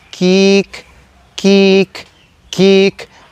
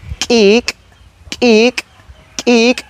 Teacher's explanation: la diferencia de la consonante k y su versión glotalizada